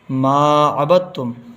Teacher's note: با ملے گا تا سے، دال چھوٹ جائے گا، دال نہیں پڑھا جائے گا کیونکہ تا میں تشدید ہے. جب تشدید آتی ہے اور جزم بھی آتا ہے تو تشدید کو پڑھتے ہیں، جزم کو چھوڑ دیتے ہیں، تو جزم والا حرف چھوٹ جائے گا.